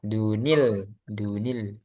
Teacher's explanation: Jadi ketika disambung maka ada tambahan nun kasroh. Nah, kalau di mushaf Depak itu ada nun kecil ya, ada sudah dibantu nun kecil kalau disambung.